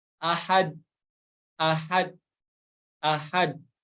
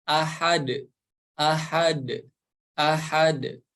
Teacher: Huruf dal di sini berharokat tanwin domah, dan jika kita wakof di ayat yang pertama ini maka akan berubah harokatnya menjadi sukun. Maka huruf dal yang berharokat sukun harus dipantulkan. Kesalahan yang terjadi ya biasanya yang pertama huruf dalnya tidak dipantulkan, ketelan gitu ya. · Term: qalqalah